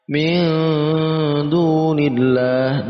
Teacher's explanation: Nun mati bertemu dengan dal ikhfa. Nun mati bertemu dengan dal itu masuk dalam kategori ikhfa, dibaca samar dengan ang.